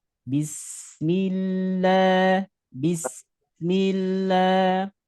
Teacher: Sin itu keluarnya dari ujung lidah dengan ujung gigi seri bawah. Ujung lidah dengan ujung gigi seri bawah. Nah, sehingga ada sifat sofirnya. · Sehingga ada sifat sofirnya. Sofir itu mendesis. Jadi seperti desisan ular. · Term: sin sukun